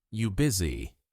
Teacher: And you busy is actually are you busy, but the R disappears. So, you just hear you busy.